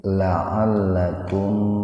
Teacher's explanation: Jadi mimnya dibaca jelas Pak, tahan 2 ketukan biar terdengar jelas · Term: idhar safawi